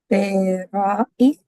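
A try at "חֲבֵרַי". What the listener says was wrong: Haverai. Haverai. Say haverai 3 times. And you remember how when you first read it, you said haverai, haverai. So that it sound, you were inserting an e in it. You were not just saying rai, you were saying ra'i, ra'i.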